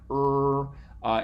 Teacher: so you might be able to feel that but it's still there's no closure in the middle for a retroflex if there's a closure anywhere it's on the sides but it's open through the middle